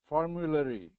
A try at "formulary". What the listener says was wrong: Smooth out that R. Formulary.